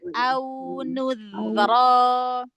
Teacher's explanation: Au sampai monyong, wawunya dialirkan.